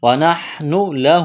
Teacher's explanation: نون ساکن کے بعد ہا ہے، حروف حلقی ہے، یہاں پر غنہ نہیں کریں گے، آواز ناک میں نہیں چھپائیں گے. ونحن لہ ہا کے اوپر کڑا زبر ہے، ایک الف کے برابر کھینچنا ہے.